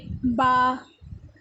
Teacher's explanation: با بند ہونٹوں کے گیلے حصے سے